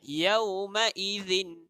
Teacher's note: Kita gigit dan kita bunyikan huruf Z. Inilah sebutan zal.